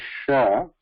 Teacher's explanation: Again here there is no complete contact. As we say sha, there is no complete contact as in cha · the jihva madhya, middle top of the tongue, that is approaching talu. Again here there is no complete contact. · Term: Ishat Vivruta